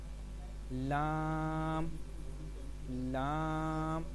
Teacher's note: زبان کا کنارہ اور دواحک سے ثنایا تک کے مسوڑوں سے ادا ہوتا ہے